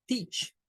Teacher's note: el diptongo ea para esta palabra se comporta como una I como un sonido largo